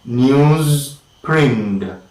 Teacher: Because when we say newsprint, the final sound in news is of course voiced, but the next sound, that is of course the initial sound of print, is voiceless. So we have to say the voiced followed by the voiceless, and this particular change from the voice to the voiceless is rather tedious.